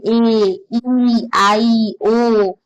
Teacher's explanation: Vowel sound को pronounce करते हैं तो हमारे टंग में एक फिसलाव, स्लाइडिंग फील होती है, स्लाइडिंग मूवमेंट ऑफ टंग होता है।